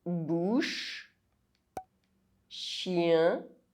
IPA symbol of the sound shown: ʃ